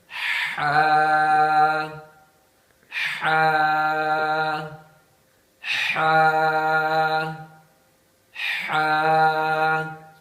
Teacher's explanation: تھوڑا زور دے کر گلے کے درمیان سے ادا کیا جائے۔